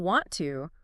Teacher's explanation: requires you to stop the airflow in your mouth completely for that t sound and then start it up again. >> It creates friction.